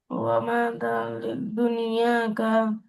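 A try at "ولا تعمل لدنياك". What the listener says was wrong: ওয়ামা না, ওয়ালা। ওয়ালা তা'মাল লিদুনিয়াকা।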